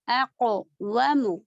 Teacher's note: वाव के लिए पूरे होठ गोल, ठीक है